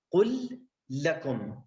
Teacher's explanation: إذا جاءت اللام بعدها لام فيكون هنا الإدغام بسبب التماثل